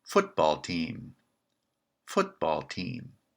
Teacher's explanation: is the second word branching well here the second word is team that's not branching it's a simple word so again it's the weak member of the compound